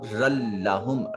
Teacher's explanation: جب لام اور را کے ساتھ ادغام کیا جائے تو پھر اس وقت غنہ نہیں آتا، ادغام بغیر غنہ کے ہوتا ہے،